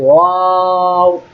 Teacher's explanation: ওয়াও এর মাখরাজটা খুবই সহজ, ঠোঁট থেকে একটু উচ্চারণ হয়, কিন্তু ঠোঁটটা গোল করতে হয়, বলতে হয় ওয়াও।